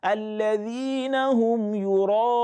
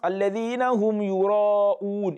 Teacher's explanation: elongation must be 6 times